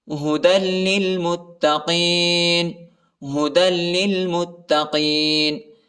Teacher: دال کو لام کے ساتھ ملانا ہے اور میم کو تا کے ساتھ ملانا ہے، تا پر شد آیا ہے اور اسلام کے اوپر بھی شد آیا ہے۔